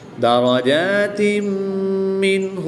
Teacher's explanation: نون ساکن کے بعد ہا حروف حلقی میں سے ہے تو یہاں پر اظہار ہوگا، یعنی نون ساکن کو خوب ظاہر کر کے پڑھیں گے، غنہ نہیں کریں گے